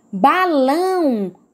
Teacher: como a última sílaba é a mais tônica, é a mais forte, então é uma palavra oxítona